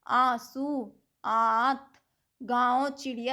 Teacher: और अनुनासिक में अंतर क्या-क्या होता है जो अनुनासिक होते हैं इनके उच्चारण में नाक से बहुत कम सांस आती है और मुंह से अधिक आती है